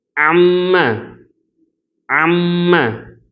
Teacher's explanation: மீம் இருந்துச்சுன்னு சொன்னாக்கா மீம்ல ஒரு வைப்ரேஷன் வரும்